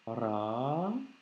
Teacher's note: c'est un alif long, donc c'est un A allongé, ce qui nous donne Ra.